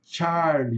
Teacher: esse CH, vai ter som de T ch, de tchan